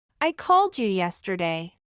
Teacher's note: cuando la d va seguida de la Y en este caso ambas consonantes unen sus sonidos y forman el sonido que posee la J en inglés el cual es llamado frada postalveolar Sonora sonido que podemos escuchar